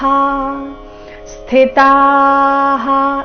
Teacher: ಸ್ಥಿ ನಲ್ಲಿ ಥಿ ಮಹಾಪ್ರಾಣ ರಸ್ವ ಬರಬೇಕು